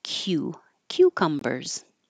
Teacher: your tongue is starting very high in the Y position